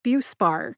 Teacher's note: I tend to emphasize BUE